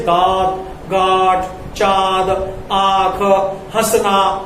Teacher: ये वे वर्ण हैं जिनका उच्चारण मुख एवं नासिका दोनों से होता है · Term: अनुनासिक